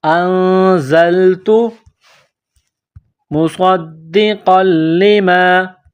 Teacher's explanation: نون ساکن کے بعد زا ہے. حروف اخفا ہے تو یہاں پر غنہ کریں گے. آواز ناک میں چھپائیں گے. اخفا کریں گے.